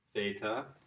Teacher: Blend of two, because it is really the TH sound. More like an aspirated t, but we typically interpret it as a TH sound in English